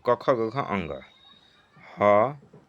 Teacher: क ख ग घ और ह और विसर्ग इनका उच्चारण स्थान होता है कंठ